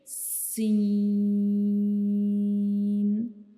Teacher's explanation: जब हम सीन को पढ़ेंगे तो हमारे ऊपर वाले और जो नीचे वाले दांत हैं ये आपस में एक दूसरे को टच करेंगे · को पढ़ेंगे तो हमारी ज़बान की जो नोक है वो ऊपर की तरफ जाएगी और जो हमारे ऊपर के जो 2 सामने वाले दांत हैं उनके अंदरूनी हिस्से के अंदर वाली साइड पे वो टच करेगी , लेकिन बिल्कुल जो हमारे मसूड़े हैं उनके साथ बिल्कुल टच